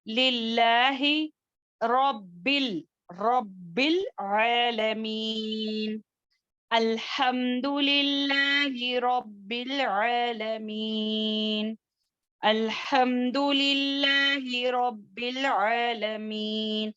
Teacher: للہ لفظ جلالہ یہاں پر اللہ کے لام کو باریک پڑھیں گے